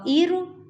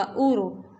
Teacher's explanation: را ساکن سے پہلے پیش ہے تو یہ بھی را موٹی ہی پڑھی جائے گی